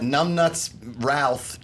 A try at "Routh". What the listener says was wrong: a TH. Yes, you did say Ralph.